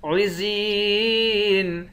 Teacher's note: زا کو یا کے ساتھ ملا کر یا کو ایک الف کے مقدار کھینچیں گے، یا حروف مدہ ہے، آخر میں نون ساکن ہے۔